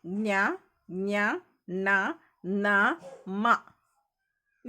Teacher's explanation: ಆದರೆ ಅದರ ಶಬ್ದ ನಾವು ತೆಗೆಯುವಾಗ ಒಂದಷ್ಟು ಶಬ್ದ ಮೂಗಿನಿಂದ ಹೊರಗಡೆ ಉಸಿರಿನ ಜೊತೆಗೆ ಬರುತ್ತೆ. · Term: ನಾಸಿಕ